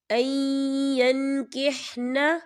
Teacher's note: یا دیکھیں این یا نون ساکن ہے اور نون ساکن کے بعد یا آ رہا ہے، یا جو ہے رفع ملون میں سے ہے، تو یہاں پر ادغام ہوگا، تھوڑا سا غننے کے ساتھ پڑھیں گے